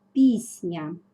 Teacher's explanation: приголосні завжди сильніші за тверді тому впливають на них наприклад пісня М'який приголосний нь впливає на твердий с і робить його м'яким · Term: уподібнення за м'якістю